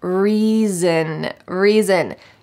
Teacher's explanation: Notice that the S sounds like a Z.